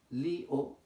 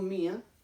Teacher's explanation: En ambos casos son hiatos acentuales. Cuando yo digo la palabra lío, li-o, ahí hay dos sonidos. Li-o, se ha separado la i de la o. Cuando digo mía, tengo la i y la a. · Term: hiato acentual